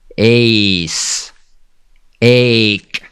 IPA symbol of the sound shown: ei